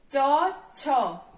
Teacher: हम जब भी चौ छ बोलेंगे तो चौ छ बोलते हुए हमारा ये जो चौ वर्ग जब भी हम बोलते हैं, चौ वर्ग का जब भी हम उच्चारण करते हैं तो हमारी जीभ कहाँ लगती है, तालु के ऊपर लगती है, ठीक है, तालव्य होता है ये।